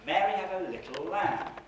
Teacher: the first foot is Mary had a, the second foot is little, and the third foot is lamb. We've only got 3 feet.